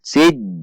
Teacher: Ada tekanan karena jim memiliki sifat syiddah. Sij, ada tekanan.